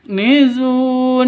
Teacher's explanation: kafnya huruf Hamas harus ada desis atau nafasnya yang keluar